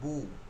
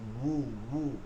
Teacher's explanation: আর বু মানে ঠোঁটটা গোল করে বু বলতে হবে। ঠোঁট জি গোল থাকবে, মধ্যখানে ফাঁকাও থাকবে, এই অবস্থায় বু বলতে বলার চেষ্টা করতে হবে। তাইলে এটা ওয়াও জি, উচ্চারণ পাওয়া যাবে, ওয়াও পেশ বু, বু। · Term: ঠোঁট গোল